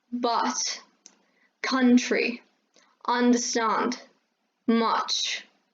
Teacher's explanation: british pronunciation you have your my your mouth really open and the sound more resembles ah rather than uh